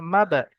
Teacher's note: হরুফে কলকলা পাঁচটি অক্ষরের মধ্যে থেকে বা এসছে, একটু ঝাটকার সঙ্গে পড়তে হবে